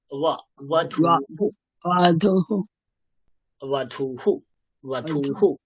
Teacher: উপরের দাঁত নিচের ঠোঁট